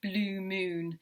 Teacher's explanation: That's the repetition of vowel sounds to create internal rhyming, so like blue moon. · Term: assonance